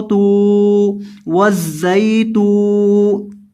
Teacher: تا کو لمبا کریں گے کیونکہ اس کے بعد واو مدہ ہے۔ تا پیش واو تو وزئی تو، ایک الف کے برابر لمبا کریں گے۔